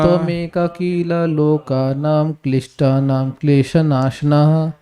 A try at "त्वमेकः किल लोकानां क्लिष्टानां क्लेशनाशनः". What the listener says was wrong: त्वमेकः किल लोकानां क्लिष्टानां क्लेशनाशनः। देखिए वो कील नहीं है उसमें कील मत ठोक दीजिए आप, किला है, कील नहीं है भाई, हिंदी मत बोलिए, किला किला। त्वमेकः किल लोकानां क्लिष्टानां क्लेशनाशनः।